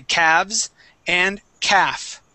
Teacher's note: And the L is going to be silent. Okay, we say calves and calf.